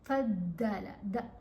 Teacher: آپ کی جو زبان ہے نا وہ زبان کی رائٹ سائڈ اوپر دانتوں کے ساتھ ٹچ کرے گی